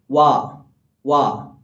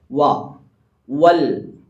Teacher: മഹ്റജ് അതല്ല മറിച്ച് രണ്ടു ചുണ്ടുകളും മുന്നിലേക്ക് കൂർപ്പിച്ചുകൊണ്ട് വാ ഇതാണ് വാവിന്റെ മഹ്റജ് രണ്ടു ചുണ്ടുകൾ മാത്രമാണ് മഹ്റജ് ഈ രണ്ടു ചുണ്ടുകൾക്കിടയിൽ നിന്നാണ് ഈ വാവ് എന്ന അക്ഷരം പുറപ്പെടേണ്ടത്